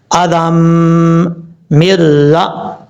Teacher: اب یہاں پر دو زال کے اوپر جو دو زبر ہیں، دو زبر کے بعد یا ہے، اس یا کو چھوڑ دیں گے، زال کو ڈائریکٹ میم کے ساتھ کنیکٹ کریں گے، آدم مرہ۔ یہاں پر ادغام یرملون ہو رہا ہے اور بغیر غنہ کے